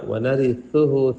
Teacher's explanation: سا پڑھتے ہوئے زبان نکالے